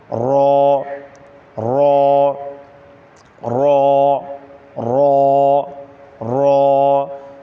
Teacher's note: زبان کے کنارے کی پشت جب اوپر والے 3 دانتوں کے مسوڑوں سے لگے اس سے را ادا ہوتا ہے